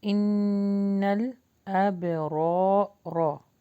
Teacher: اب رو کو ہیوی پڑھیں گے، الف مدہ کے ساتھ ہے تو اس کو لانگ کریں گے